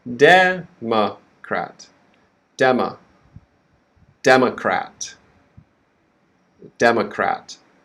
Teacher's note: Okay, so the first syllable is stressed, de, and then we have the next syllable is reduced, ma, quick, ma. And then the next syllable, we have the minor stress, crat. Okay, so the vowels in this word are e, a, e, a, e, a.